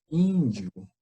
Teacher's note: Então, seria a sílaba tônica o in. Então, pela nossa contagem, ela é a penúltima sílaba, tudo bem?